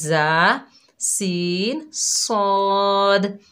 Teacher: जब हमारी ज़बान की नोक नीचे वाले 2 दांत सनाया सुफला के अंदरूनी किनारों से लगेगी और सनाया उलिया सनाया सुफला से लगेंगे तो ये 3 हर्फ अदा होंगे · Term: मखरिज